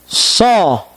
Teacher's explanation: Kemudian yang kedua setelah kha adalah huruf shad. Shad, lidah kita terangkat ke atas, menegang, hampir menempel kepada langit-langit. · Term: huruf isti'la